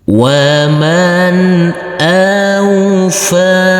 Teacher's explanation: huruf Fa ini kita baca panjang dengan panjang dua harakat